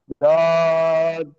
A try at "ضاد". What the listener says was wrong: খেয়াল রাখবেন যেন জিহ্বার আগায় এই দুই দাঁতের আগায় না লাগে, জদ এরকম না লাগে, ক্লিয়ার? জদ এটা বলা যাবে না।